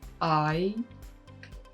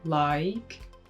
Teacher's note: uses a diphthong which means a slide between two vowel sounds